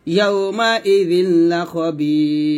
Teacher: 3 আলিফ টান দিয়ে রটাকে ধরবো এবং পাতলা করবো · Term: রটা পাতলা